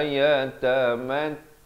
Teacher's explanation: dua harakat, ain di pertengahan kerongkong